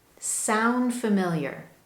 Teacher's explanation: do you notice you don't hear that strong d sound at the end of sound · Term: dropped d